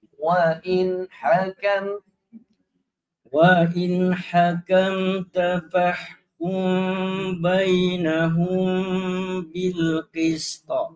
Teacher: dia tak boleh bertemu tu nun dengan ha, sebab nun makhraj lidah, ha makhraj tekuk.